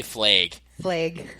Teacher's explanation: I say flag yeah everyone else says we say flag flag we have long A's our vowels are long